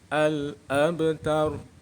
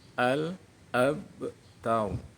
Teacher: Cara membaca qalqalah sughra, ba dibaca memantul.